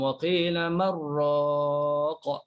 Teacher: Waqila man, letak pada nun, waqila man raqa. Kalau baca Ibnu Amir tak ada saktah, terus idgham waqila marraqa.